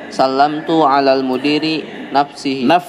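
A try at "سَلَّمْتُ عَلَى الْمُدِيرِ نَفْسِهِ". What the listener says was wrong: Nunnya di fathah, fa-nya disukun. Ini kasrah keliru ya, keliru.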